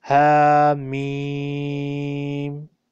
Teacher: Ha has erect fatha, so we'll elongate it two times. Then meem has madda, we will elongate it three times.